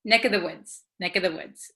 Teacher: usually this of the V sound kind of disappears because V's are hard to pronounce so we tend to say NEC of the woods NE this